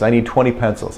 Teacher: most people in the United States do not render the T at all in general.